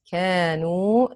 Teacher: Waw, natural mud extended for 2 counts. كانوا, the alif and the waw are both natural mud extended for 2 counts